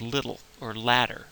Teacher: The middle sound in the word like little or ladder spelled with T's or D's, they're pronounced the same. We hear it as a T, but it's actually acoustically it's something different.